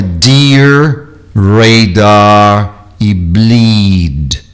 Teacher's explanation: Esses dois Es com um som de I exagerado, até abrindo um pouco, como num sorriso, os lábios para o lado, a boca para o lado, para a lateral.